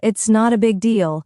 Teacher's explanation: Stress on not and deal.